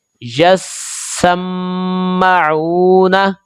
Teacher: یہ جو میم مشدد ہے یہاں پر غنہ کریں گے، اور غنہ کی صورت میں لمبائی ایک الف کے برابر ہوگی